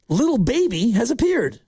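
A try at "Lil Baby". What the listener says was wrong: Little Baby. There's no T. Little Baby.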